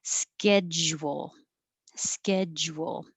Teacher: you're going to round your lips for the w and that makes your tongue change position